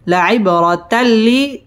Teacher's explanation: কলকলার হরফ ধাক্কা দিয়ে পড়তে হবে লাইব র পুর হবে লাইবরাতাল্লি তানবিনের বামে লাম আসছে লাম ইদগামে বেলা গুন্নার হরফ গুন্না ছাড়া মিলিয়ে পড়তে হবে